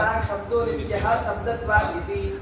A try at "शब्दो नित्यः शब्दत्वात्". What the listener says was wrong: हाँ, शब्दो नित्यः शब्दत्वात्। ध्यान से, शब्दो नित्यः शब्दत्वात्। और नहीं ना जोड़ा है? नित्य न कह रहे हैं। ध्यान से, खंडाकार हो तो उसको अलग करके पढ़ो तभी ना साफ साफ समझ में आएगा। शब्दो नित्यः शब्दत्वात्।